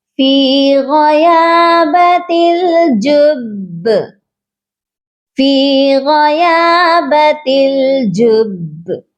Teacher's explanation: ہم نے یہاں پر قلقلہ تو کرنا ہے لیکن مضبوطی ہونی چاہیے ہمارے قلقلے میں